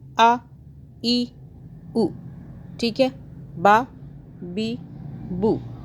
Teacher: ہم نے ایسا نہیں پڑھا آ یعنی کہ ہم نے مدہ نہیں کیا، کھینچا نہیں